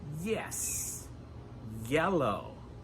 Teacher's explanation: Remember that the y sound in English starts with eee (iii)